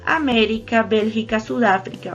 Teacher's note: Entonces el acento está en la antepenúltima y todas se tildan. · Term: esdrújulas